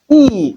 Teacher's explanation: long high front spread vowel